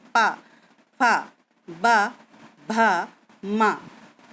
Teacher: ये सारे व्यंजन हमारे होठों के द्वारा बोले जाते हैं। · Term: पा वर्ग